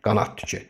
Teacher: Bu zaman d necə deyiləcək? Yenə t-ya çevriləcək. Niyə? Çünki özündən sonra samitlə başlayan söz gəlib.